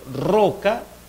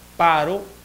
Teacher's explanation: R entre vocales va a tener una realización mucho más suave